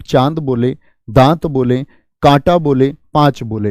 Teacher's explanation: मुख से ज्यादा वायु निकल रही है लेकिन नाक से कम निकल रही है। लेकिन यहां पर आप बोले चंद्र, बोल के देखिए, नाक पर एक जोर जाएगा आपके।